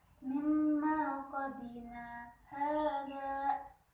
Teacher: bacaan sakta yaitu berhenti sejenak tanpa mengambil nafas